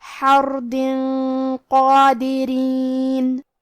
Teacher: کیونکہ قاف حروف تفخیم میں سے ہے تو ہمیں یہ غنہ کو بھاری آواز میں پڑھنا ہے